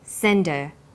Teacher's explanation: send is the strong form and her is weak because her is not stressed we drop the initial hurt sound so it's pronounced sender what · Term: drop the initial h sound